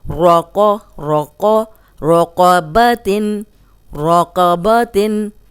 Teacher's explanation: را پہ زبر ہے، را کو موٹا پڑھیں گے، قوف موٹا ہے، اس کو بھی موٹا پڑھیں گے، اور با اور تا جو ہے وہ باریک ہے۔